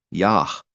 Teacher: If there's a dot at the end of this letter specifically, then it's an exception then to where it's normally not pronounced, but if there's a dot in it, it's pronounced. So then it's Yah, like breathing at the end.